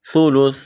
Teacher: ثلث سا کو نرم کرنا ہے، وقف کریں گے، سا کو ساکن کریں گے